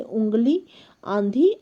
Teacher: तो जब स्वर केवल मुख से बोले जाते हैं तो उनका रूप साधारण होता है, परंतु जब स्वर नाक से बोले जाते हैं तो उनके ऊपर चंद्र बिंदु लगाया जाता है। ऐसे स्वर नाक से बोले जाने के कारण अनुनासिक कहलाते हैं